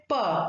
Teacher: both the articulators the lower lip and upper lip they there is a complete closure and then suddenly there is the release of air so the relationship is that of complete closure and suddenly release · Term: plosive